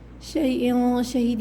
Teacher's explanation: شیء شہید، یہاں پر اخفا ہوگا، ناک میں چھپا کے غنہ کیا جائے گا، آخر میں حروف قلقلہ ہے، دال میں آواز پلٹ کر آئے گی، ٹھیک ہے۔ ان الذین فتنوا المؤمنین والمؤمنات، یہاں پر حمزہ پہ سکون ہے تو جھٹکا دیں گے، یا مدہ ہے، کھینچ کے پڑھیں گے۔